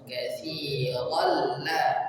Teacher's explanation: Dari tanwin ke lam bertasydid masuk katsiral, tanpa didengungkan, tanpa ditahan, langsung katsiral la, langsung.